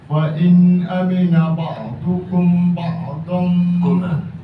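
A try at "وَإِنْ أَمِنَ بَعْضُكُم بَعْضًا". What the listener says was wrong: In amina ba'dukum panjang sikit. Mim mati je berapa? Ikhfa syababi.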